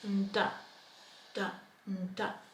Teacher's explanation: Nda is made right under the teeth, da, da, because we have the ta there, nda, nda. And nda is a stronger sound and your tongue would be at that ridge just behind your teeth, nda, da, nda.